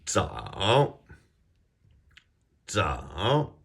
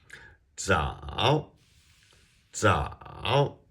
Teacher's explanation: Z is our DZ sound. It sounds as though you're starting with a D and then transitioning to a Z sound. And this is third tone.